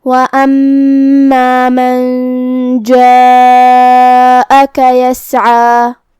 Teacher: کلمت وَأَمَّا میں یہاں میم پہ تشدید ہے، 2 حرف کے برابر ہمیں حرف المیم کو پڑھنا ہے کیونکہ تشدید کی اصلیت 2 حرف ہوتی ہے۔